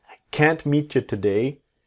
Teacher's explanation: Always that strong t of can't.